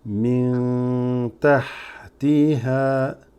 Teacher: This is a noon with a sukoon. You'd read min followed by a ta. This is ikhfa.